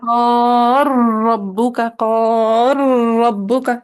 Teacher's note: را کی تشدید کو بھی تھوڑا ٹائم دیں